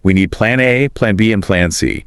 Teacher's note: It also rises slightly when you're listing items, like we need plan A, plan B, and plan C. The pitch goes up on A and B. And then falls on C, the final item.